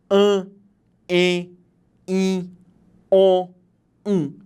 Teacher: ar eu tenho a produção de um som vocálico além disso esse meu som vocálico pode ser produzido pela boca mas pelo nariz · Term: possibilidade nasal